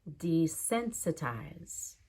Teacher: sense is my primary stress but D will have secondary desensitize even the eyes at the end has secondary stress desensitize